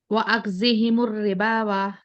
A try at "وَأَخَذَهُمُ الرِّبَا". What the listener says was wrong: हाँ, यहाँ पर वाव अलिफ नहीं आएगा, सिर्फ रिबा को ही रुकना है आपको, ठीक है।